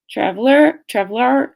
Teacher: Speaker number one avoids or mispronounces these sounds producing words like traveler traveler instead of traveler where the final eer syllable lacks the expected R coloring. This results in a flatter, more monotone sound.